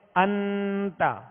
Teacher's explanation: تو انت یہ اخفا کا غنہ ہے، یعنی ناک میں آواز کو ہم نے چھپایا، ناک میں آواز کو ظاہر نہیں کیا